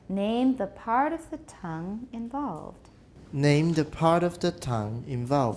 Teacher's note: part doesn't need to be that much longer